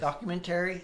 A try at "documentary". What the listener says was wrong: Yeah. You put the emphasis on the wrong syllable.